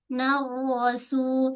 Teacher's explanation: terus tebalkan ro, jangan macam ra